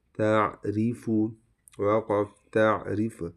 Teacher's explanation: اس را کو باریک پڑھیں گے، ٹھیک ہے